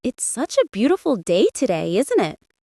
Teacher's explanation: the intonation rises at the end, making it sound like a friendly remark